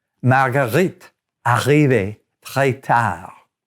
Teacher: The R sound in French comes from the back of your throat